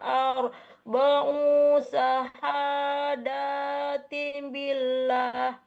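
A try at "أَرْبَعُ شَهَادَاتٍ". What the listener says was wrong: Hati-hati. Arba'u. U-nya dipendekkan. Arba'u syahadatim billah.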